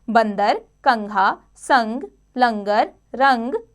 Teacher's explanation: हवा केवल नाक से निकलती है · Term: अनुस्वार